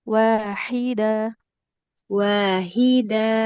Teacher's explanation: Huruf H-nya di tengah tenggorokan